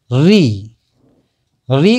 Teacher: री का उच्चारण स्थान है मूर्धा